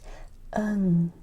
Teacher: I'm using the back of my throat in order to make an NG sound.